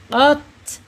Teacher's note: karena sifat ta ini al-hams, mengalirnya napas atau udara